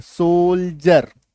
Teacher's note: तो इसका उच्चारण जो है डी का उच्चारण ज होगा।